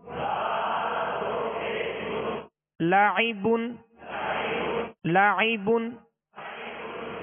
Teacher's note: عین میں حمزہ کی آواز پیدا نہ ہو